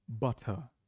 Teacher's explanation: British crisp butter and do not pronounce the r